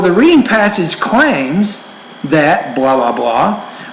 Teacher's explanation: I say claims and that's the end of a thought group so my tone is up a little bit